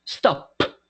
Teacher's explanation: If we touch our throat when we pronounce the letter P, right, the sound of the letter P, we are not going to feel vibration.